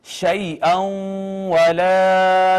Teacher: شیئن واو پہ شد تھی ما قبل نون تنوین، یہ ادغام ہو گیا